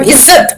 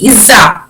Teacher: The final T, the final consonant T, the dental T is not there in Arabic, but it has been added in Hindi.